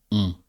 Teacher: So in spoken French, to say oui, we say on, which is a nasal sound. It's a bit like a O, but then we add an N. We don't pronounce the N, but the N turns the sound of the O into a more nasal sound.